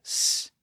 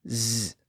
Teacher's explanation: We can begin with a voiceless S sound, S, and when we constrict those vocal folds, they start to vibrate, and S becomes Z. So the Z sound is just the voiced version of the S sound.